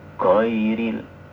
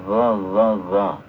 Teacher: Tidak boleh ada syiddah, ya. Tidak boleh ada syiddah. Dia murni sifatnya itu rikhwah, lembek.